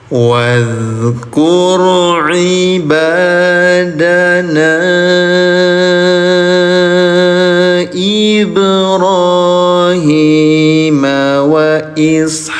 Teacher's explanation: bunyi madnya atau bunyi panjangnya lebih panjang lagi lima harakat yang harusnya dua harakat jadi lima harakat panjangnya ya namanya mad jaiz munfasil.